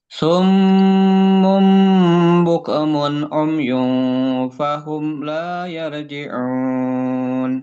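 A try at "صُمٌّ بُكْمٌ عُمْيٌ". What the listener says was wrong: Tinggal tadi kafnya Pak, hati-hati jadi mantul. Buk. Nah, jadi hamasnya buk mun.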